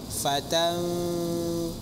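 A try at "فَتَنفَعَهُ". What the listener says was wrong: Bukan gigi bawah tapi gigi sisi atas ke bibir bawah. Fatan. Baca fa. sama hati-hati panjang pendek.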